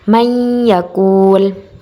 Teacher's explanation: nun sukun atau tanwin tersebut dimasukkan menjadi satu dengan huruf sesudahnya dan dibaca mendengung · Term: idgham bi gunnah